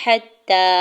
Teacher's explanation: حتی، ہا کے زبر کو تام شدت کے ساتھ ملاتے ہوئے پڑھنا ہے، تا کے اوپر کھڑی زبر ہے، دو حرکت کھینچ کے ادا کریں گے